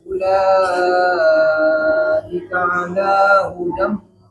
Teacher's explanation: Dhammahnya sempurnakan hu, bulatkan. · Hudam tidak maju bibirnya. Hudam biasa.